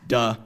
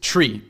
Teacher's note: last so this is known as pH stopping uh which is a tendency to harden both the voiced and voiceless th sounds